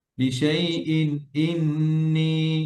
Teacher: তানবিনের পরে হামজা আসছে ইজহারের হরফ গুণনা নেই